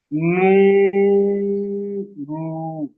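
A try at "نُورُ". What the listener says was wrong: র টান হবে না, নু রু।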